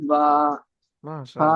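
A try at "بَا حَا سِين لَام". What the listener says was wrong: মাশাআল্লাহ, খুব সুন্দর হয়েছে।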